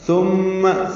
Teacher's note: ثا نرمی سے پڑھیں گے, میم مشدد پہ غنہ کریں گے